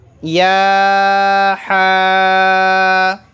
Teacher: درمیانی حلق سے نکلے گا حا